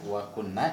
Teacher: wa kunna itu ditahan lama sebab ada nun bertasdid ya, nun tasdid.